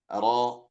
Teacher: Takrir ini adalah getaran. Jadi ketika kita mengucapkan huruf ro maka harus ada getarannya